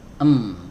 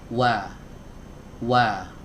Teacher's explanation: wawu keluar dari dua bibir tempatnya sama seperti Huruf mim bedanya kalau huruf mim itu rapat ya m kalau huruf Waw diiringi dengan memajukan bibir